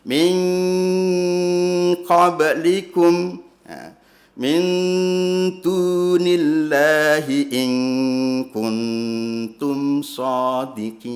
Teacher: nanti ada bunyi dengung yang seperti bunyi kalau ditulis nk, eng, ya. Ketika dijumpainya nun sukun atau tanwin bertemu dengan qaf atau kaf. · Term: ikhfa hakiki